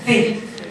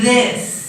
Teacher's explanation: So that's exactly the same sound, except that this, it's voiced, right? Vocal cords vibrate.